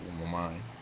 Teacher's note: you do put the pronunciation, the accent on the second syllable